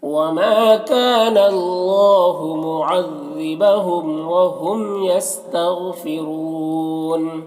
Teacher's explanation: यहाँ पर वाव मद्दा है, वक्फ़ की सूरत में मद्दा आरिज़ वक्फ़ी होगा। ग़ैन हुरूफ मुस्तालिया में से पुर पढ़ेंगे